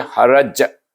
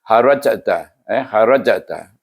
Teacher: Kalau kita berhenti haraj, bunyi kuat, bunyinya kuat. Tapi bila kita menyambung harajta, harajta, ada qalqalah tapi perlahan. Itu dipanggil sughra. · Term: qalqalah sughra